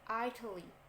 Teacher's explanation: Nah, yang dibaca T di sini dia berubah menjadi D sound atau suara D ketika kita mengucapkan negara Italia. T-nya itu lemah.